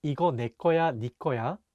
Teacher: ne is sometimes pronounced ni in spoken korean